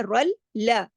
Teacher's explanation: اگلی لام کے اوپر تشدید ہے، رل لا، 2 دفعہ لام پڑھا جائے گا